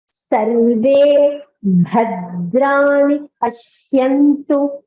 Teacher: So the stress is only on the bha of bhadrani. The dra is alpa prana, so there is no stress on the dra.